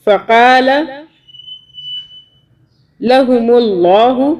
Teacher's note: اللہ کو موٹا پڑھیں گے، اللہ سے پہلے پیش آ رہا ہے میم کے اوپر، زبر آئے اللہ سے پہلے یا پیش آئے تو اللہ کو موٹا پڑھتے ہیں۔